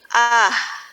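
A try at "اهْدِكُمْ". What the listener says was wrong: Nah, di situ yang salahnya. Nah, itu udah panjang dia. Jadi seharusnya dia ya ahdikum sabilar rasyad.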